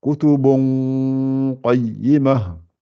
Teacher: le ta marbouta à la fin, faites bien un ha, laissez-lui le temps de sortir